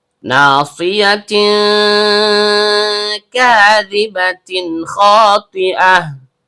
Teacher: Karena tak marbutahnya berharokat tanwin bertemu dengan huruf kaf yang keluar dari pangkal lidah naik ke langit-langit di atasnya, maka terjadi hukum bacaan ikhfa hakiki ab'ad atau ikhfa hakiki adna. Dibaca samar disertai dengung. Disebut sebagai ikhfa hakiki ab'ad karena kaf ini adalah salah satu huruf ikhfa yang jauh dari nun sukun.